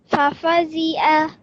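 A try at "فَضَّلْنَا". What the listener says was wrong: Just with the ayn, can you try to pronounce it from your throat? So, fafadi'a.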